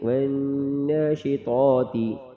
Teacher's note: طا موٹا پڑھیں گے اور دو نقطوں والی تا باریک